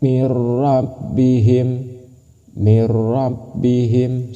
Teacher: Ketika nun mati bertemu dengan ra ataupun tanwin bertemu dengan ra, maka itu disebut dalam bilagunah. Cara membacanya masuk tanpa berdengung. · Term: idgham bila gunnah